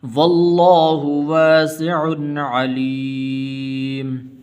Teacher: غنہ نہیں کریں گے اس لیے کہ آگے عین حروف حلقی میں سے ہے